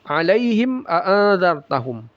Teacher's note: Alaihim a'adzartahum. Ya, mim sukun bertemu hamzah izhar syafawi. Dibaca jelas mim sukunnya, jangan ada guna.